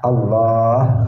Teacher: A-nya pendek, yang panjang itu lamnya yang di tengah Allah. Kemudian ada haknya di akhir Allah.